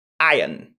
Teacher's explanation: On dira plutôt iron. Sans le R.